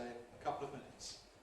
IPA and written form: ə ˈkʌpləv ˈmɪnɪts (a couple of minutes)